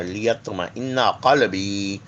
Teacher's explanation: زبان کی نوک اور اوپر کے دانتوں کی جڑ سے ادا ہوا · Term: حرف نتیہ